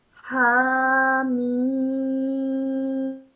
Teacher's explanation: ha is pronounced for 2 seconds and then the mim for about 4 to 6 seconds. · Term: Maddul Kabir